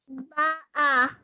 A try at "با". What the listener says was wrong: Ba. Make it longer. Ba'a.